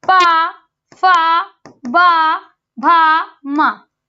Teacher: पा, फा, बा, भा, मा, ये किससे बोला जाता है, ये ओष्ठ से बोले जाते हैं।